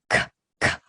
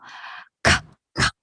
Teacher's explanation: I think the reason that most people don't like K for good sound is because they refer to the English pronunciation where K usually sounds k, k, aspirate with aspiration. Aspirated K, meaning there's air coming out.